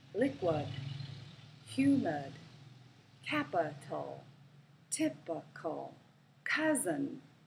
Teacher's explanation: the letter i can also represent the schah sound